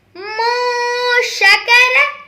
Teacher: اس میں نون ساکن کے بعد شین آ رہا ہے جو کہ حروف اخفا میں سے ہے، اس لیے اس پر غنہ کریں گے